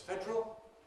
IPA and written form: ˈfedrəl (federal)